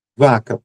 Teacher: o som de v, já é sonoro porque vibram as cordas vocais